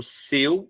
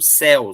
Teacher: Se eu não colocar a diferença do acento seu, o som fechado, céu, som aberto.